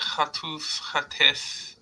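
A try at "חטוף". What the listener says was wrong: Yes. Mm-hmm. Yes.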